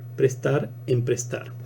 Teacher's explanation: en este caso es una prótesis silábica porque se añade toda una sílaba